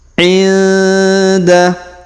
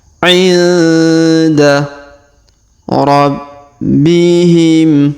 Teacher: Huruf nun sukun bertemu da, maka kita dengungkan dan kita samarkan